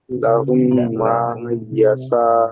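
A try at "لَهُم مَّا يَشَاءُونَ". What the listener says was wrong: হামজা ও পেশ উ, লাহুম মা ইয়াশা উ। নুন জাবার না, লাহুম মা ইয়াশাউনা।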